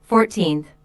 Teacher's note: The stress is on the second syllable, 14th.